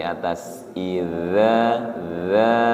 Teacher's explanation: Ujung lidahnya menyentuh ujung gigi seri atas. Idza za. Suaranya lembut.